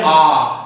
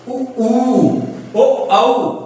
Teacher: Total भाग जो जीभ का है पीछे चला जाएगा। जैसे हम बोलेंगे आ तो जीभ हमारी पीछे भागेगी · जब हम उच्चारण करेंगे तो जीभ सीधा पीछे चली जाएगी, टोटल भाग जो जीभ का है पीछे चला जाएगा। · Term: पश्च स्वर